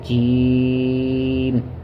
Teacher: جیم کو 5 الف کی مقدار کھینچا جاتا ہے، جس کو ہم مد کہتے ہیں